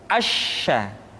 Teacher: Berikutnya huruf sya. Sya dikeluarkan dengan cara mengangkat tengah lidah kita ke langit-langit. Asya. Dan sifat yang dimiliki oleh huruf sya yang paling nampak adalah apa yang disebut dengan sifat at-tafashi, yaitu menyebarnya angin di dalam mulut kita.